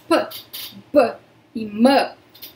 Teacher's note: Por exemplo, em P, B e M, temos três fonemas que são bilabiais. A única diferença entre esses três fonemas é a vibração que acontece no B. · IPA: /P/ /B/ /M/